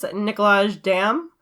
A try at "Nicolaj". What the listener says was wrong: Yeah, and I think it's Nikolai. I think the J is silent for that.